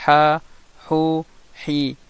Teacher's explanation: Donc c'est avec lisan al-mizmar, avec l'épiglotte, qu'on arrive à sortir le ayn et le ha.